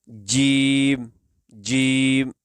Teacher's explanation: تو زبان کا درمیان اوپر کے تالو کے درمیان سے لگے، یہ جو اوپر کا جو تالو والا حصہ ہے اس کے درمیان سے لگے، زبان کا درمیان اوپر تالو کے درمیان سے لگے تو اس وقت یہ حرف ادا ہوگا